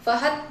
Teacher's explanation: Dan juga pada kata fahad itu terdapat hukum qalqalah sugrah pada huruf dal yang dibaca memantul dengan ringan